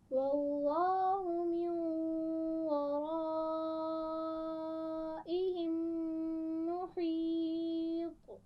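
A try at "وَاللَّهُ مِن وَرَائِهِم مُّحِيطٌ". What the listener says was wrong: محیط آخر میں قلقلہ تھوڑا واضح کیجیے گا.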